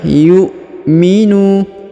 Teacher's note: huruf nu dipanjangkan 2 harokat karena di depannya terdapat waw sukun, sedangkan alifnya tidak dibaca atau tidak dianggap.